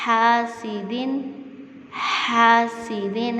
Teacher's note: دال دو زیر دن ہے، یہاں پر ہم لوگ غنہ نہیں کریں گے کیونکہ اس کے بعد ہا آ رہا ہے